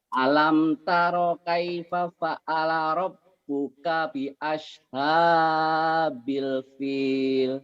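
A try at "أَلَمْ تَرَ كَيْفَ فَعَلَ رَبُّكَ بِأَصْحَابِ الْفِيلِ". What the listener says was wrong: Iya, bi ashabil fil. Bapak di sini masih nahan nih. Masih nahan. sini idhar. Bapak masih alam, jangan. Alam taro.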